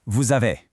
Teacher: that S at the end of les links up with the A in ami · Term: liaison